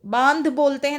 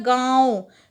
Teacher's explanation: बांध मतलब नाक और मुंह दोनों से आवाज़ आ रही है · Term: अनुनासिक